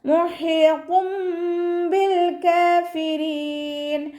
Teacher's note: ഹഇൻ്റെ മഖ്റജ് വസത്തുൽ ഹൽക്കാണ്, തൊണ്ടയുടെ മധ്യഭാഗം. സൗണ്ടിനെ ക്ലിയർ ആക്കിയിട്ട് തന്നെ ഉച്ചരിക്കാൻ ശ്രദ്ധിക്കട്ടോ.